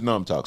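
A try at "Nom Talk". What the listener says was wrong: Numb talk. Don't say numb. It's an O. Numb talk.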